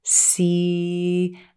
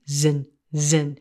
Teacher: Then zin, zin. We turn on our voice, the vocal cords vibrate, and we get the Z sound, often represented by the letter Z.